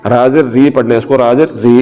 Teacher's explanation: और अगर ज़ेर आ जाए तो फिर रा को याद रखें हमेशा रा बारीक ही पढ़ी जाएगी। राज़िर री पढ़ना है इसको, राज़िर री ये बारीक पढ़ी जा रही है।